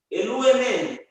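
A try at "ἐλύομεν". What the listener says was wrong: Eluomen. No, Eluomen, not Elue. Eluomen.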